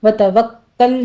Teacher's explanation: وتوکل میں کاف کے پر تشدید ہے، سختی کیجیے اور لام کو سٹاپ کر دینا ہے